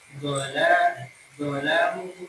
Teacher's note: Idbaq itu lidah lengket. Lengket dengan langit-langit.